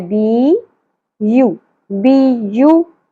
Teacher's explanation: یا کے اوپر تشدید ہے، مطلب ہم نے پہلے یا کو ساکن کر کے با کی زیر کے ساتھ جوڑنا ہے